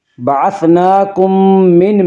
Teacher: میم ساکن کے بعد اگر دوسری میم آئے تو وہاں پہ ادغام شفوی ہوگا۔